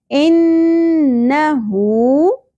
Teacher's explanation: الٹا پیش مد اصلی ایک الف کے برابر کھینچنا ہے